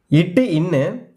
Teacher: நாவின் நுனி அன்னத்தின் நுனியை பொருந்துவதால் பிறக்கும் மெய்யெழுத்துக்கள்